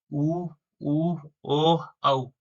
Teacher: जिनका उच्चारण करते समय हमारे होठ है वो गोल हो जाते हैं, उसको वृत्ताकार स्वर कहते हैं। उ, ओ, औ।